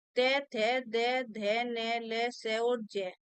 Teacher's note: जब हम इनका उच्चारण करते हैं तो हमारे दांतों का प्रयोग इसमें होता है